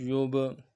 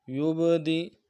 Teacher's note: با حرف قلقلہ میں سے قلقلہ کریں گے